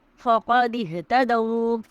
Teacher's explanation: فقد اهتدوا میں قاف کی آواز کو ہم حلق سے ادا کریں گے